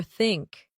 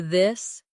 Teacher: In words like think or this, the tongue comes gently between the teeth. For think, it's soft. For this, it's voiced.